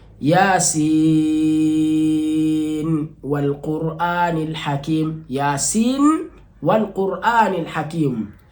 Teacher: Na kisomo namba 2 ilikuwa ni biidhahari nuni, ni nuni ilikuwa ikidhihirishwa kwa sekna yake